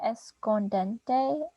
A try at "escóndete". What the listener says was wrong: Well, actually, there's not, you're putting an N in here, right here. It's just escóndete.